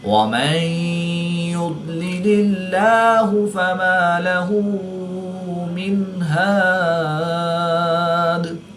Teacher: یہاں پر وقف کی حالت میں مد عارض ہوگی، اور دال میں قلقلہ صغریٰ کر کے پڑھیں گے۔